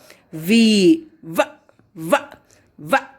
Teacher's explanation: I'm just touching my upper teeth with the lower lip.